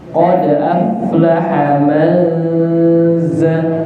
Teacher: Nun sukun ketemu zain, hukum bacanya ikhfa hakiki. Dia samar, dibacanya samar.